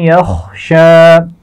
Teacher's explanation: خا موٹا پڑا جائے گا اور شین کے اوپر کھڑا زبر ہے اور وقف کرتے ہوئے اس میں کوئی تبدیلی نہیں ہوگی.